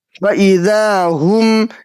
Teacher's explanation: فا زبر فا حمزہ زیر ای فئی ذال الف زبر ذا فإذا ہا میم پیش ہم فإذا ہم یہاں پہ میم ساکن کے بعد میم آ گیا ہے تو یہاں پہ ادغام شفوی کا قاعدہ بنے گا اس لیے یہاں پہ غنہ کے ساتھ پڑھیں گے